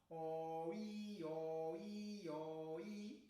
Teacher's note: passar de uma posição de cavidade vocal mais aberta para uma cavidade vocal mais fechada